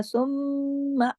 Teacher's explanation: सुम्मा के जो मीम है उसके ऊपर तशदीद है, तो हमने यहाँ सुम्मा बड़ा गुन्ना किया अकमल